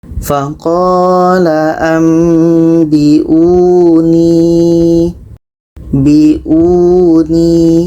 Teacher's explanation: Huruf 'u' ini masih dibaca panjang, tapi karena mad badal.